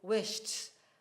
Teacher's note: if you add e d onto a word that ends in a voiceless consonant sound the e d will assume the sound t